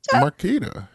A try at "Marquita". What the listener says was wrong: It's not a K. It's a QU. Sometimes they pronounce the QU like a K.